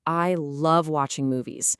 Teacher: You wouldn't say it all flat. You naturally punch up the words love and movies.